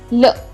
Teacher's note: ल आपण जेव्हा उच्चार करतो तेव्हा ते आपल्या दातांना स्पर्श करतं, त्यामुळे दंत.